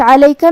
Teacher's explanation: عین کو ہم حلق کے درمیان والے حصے سے ادا کریں گے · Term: حرف العین